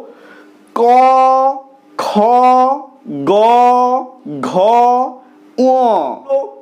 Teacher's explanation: এই কণ্ঠ থেকে সরাসরি উচ্চারিত হচ্ছে বা জীভের যে গোড়া বা মূল সেখান থেকে উচ্চারিত হচ্ছে ক খ গ ঘ যেহেতু কণ্ঠ থেকে সরাসরি উচ্চারণ হচ্ছে বা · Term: কণ্ঠ ধ্বনি